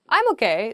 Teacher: it's like sort of upward intonation